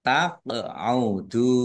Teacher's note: qaf sukun bacaan qalqalah dibaca memantul ditampakkan pantulannya